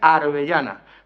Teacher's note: tiene R por L y tiene yeísmo. Yeísmo es la confusión de la L pronunciada como Y, ¿no? · el yeísmo característico del sur de Andalucía, que transmuta el fonema L por el fonema Y